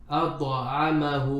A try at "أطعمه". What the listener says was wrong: You're saying do. No. This is ta. It has the same makhraj as dal and ta. So at-ta'amahu. Ta.